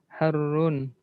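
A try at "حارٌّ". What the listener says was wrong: bukan harun, agak panjangnya iya.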